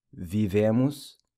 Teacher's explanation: the O in emos also pronounced like a U